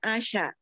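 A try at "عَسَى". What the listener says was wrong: Pakai sin. Sin bukan shin. Sin biasa. Asa semoga dia.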